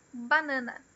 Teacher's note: Porque em português, banana. As três sílabas, elas têm o mesmo comprimento. É uniforme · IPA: /bəˈnɑːnə/